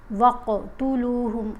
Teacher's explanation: قاف کو ساکن پڑھیں گے تو اس کے اوپر کلکلا کریں گے، ٹھیک ہے۔ وَاقْتُلُوهُمْ اور قاف کو موٹا بھی پڑھیں گے۔